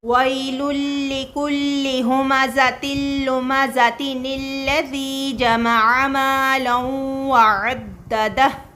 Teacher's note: تنوین جو ہوگی اس کی ایک ہی حرکت رہ جائے گی اور ایک حرکت تبدیل ہو جائے گی نون زیر میں